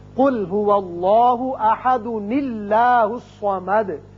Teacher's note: ایک اور قاعدہ یاد رکھیے، جب آپ اس آیت کو اس آیت سے ملانا چاہیں، اب یہاں دال کے اوپر دو پیش تنوین ہے. اب تنوین کی وجہ سے یہ الف کی زبر گر جائے گی اور ایک چھوٹا نون پیدا ہوگا زیر کے ساتھ، تو اس کو ملانے کی صورت میں یوں پڑھیں گے قل هو اللہ احد اللہ الصمد.